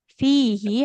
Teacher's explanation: sehabis kasrah tidak ada huruf ya-nya maka nggak boleh kita panjangkan ya